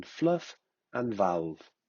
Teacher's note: Formed by contact between the lower lip and the upper front teeth. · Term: Labiodental